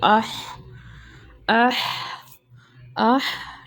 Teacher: حمزہ کی آواز کو عین کی آواز کے ساتھ مکس نہیں کرنا آپ نے، یہاں پہ مطلب ہم نے آہ نہیں کہنا، ہم نے آہ کہنا، آہ، ٹھیک ہے؟ ہم نے حلق کے 3rd پارٹ سے نکالنی ہے حمزہ کی آواز